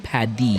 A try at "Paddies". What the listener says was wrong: Paddies. D, not a T.